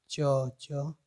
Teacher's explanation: ऐसा प्रतीत होगा कि जो हमारी जीभ है वो तालु को स्पर्श कर रही है, तो इन्हें हम तालव्य व्यंजन कहते हैं।